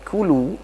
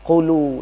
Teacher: Huruf kaf sama huruf qaf ini satu makhraj ya. Di pangkal lidah semuanya. Cuma nanti yang lebih asfalu itu huruf kafnya lebih naik ke atas lidahnya dibandingkan dengan huruf qaf agak dalam.